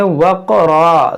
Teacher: یہاں پر جب وقف کریں گے تو اس کو پڑھیں گے وقرا, دو زبر کو الف سے بدلیں, اس کو وقرن نہ پڑھیں